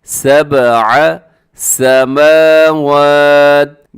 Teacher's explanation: میم کے اوپر بھی کھڑا زبر، واو کے اوپر بھی کھڑا زبر، آپ نے اس کو برابر لمبا کرنا ہے